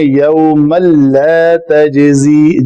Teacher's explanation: تنوین یا نون ساکن کے بعد اگر حروف یرملون میں سے لام آ جائے تو یہ ہے اس کا ادغام کامل ہوگا